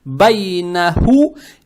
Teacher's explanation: Далее стоит буква Ха, она мягкая на выдохе произносится с даммой